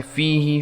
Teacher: फ़ीही फ़ा के ऊपर आगे या है, 1 सेकंड तक खींचेंगे।